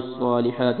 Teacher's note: ہا کو موٹا نہیں کرنا، یہ ہا بریک ہے اور اس کو تھوڑا سا لمبا کرنا ہے